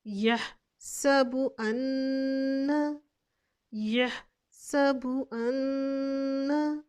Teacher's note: नून मुशद्दिद हालत में है और मैंने आपको ये बताया था जब हम नून और मीम मुशद्दिद हालत में हो तो जब आवाज़ को नाक में ठहराएंगे तो इधर हम गुन्ना भी करेंगे